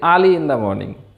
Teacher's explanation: Ra isn't pronounced in British English before consonant.